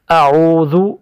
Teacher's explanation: حمزہ کہتے ہیں، اور دوسرا حرف جو ہے وہ عین ہے۔ عین کی ادائیگی جو ہے وہ حلق سے ادا ہوتا ہے، حلق کے بیچ سے عین کی ادائیگی ہوتی ہے۔